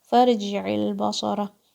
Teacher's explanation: صاد is heavy, ra is heavy.